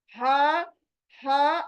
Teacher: हा हलक के बीच से है, ये भी बोले दिमाग को, हाँ ये हलक के बीच से है बोल के।